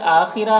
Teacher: खौ को पुर पढ़ेंगे, हुर्फ़ मुस्तालिया में से है। रौ को बारीक पढ़ेंगे। · आखिरा हमज़ा में खड़ा ज़बर है इसे 1 अलिफ के बराबर खींचेंगे